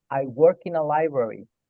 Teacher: Unan el work con in. K con el in.